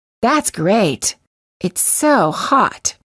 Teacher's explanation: This just gives you an idea that the T is there. Note: you will sometimes hear Americans release the final T. If they do, it's usually at the end of a phrase or a sentence, or for special emphasis of a word.